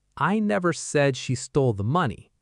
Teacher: Stress on said. This means I implied it. I suggested it, but I never said it directly with words.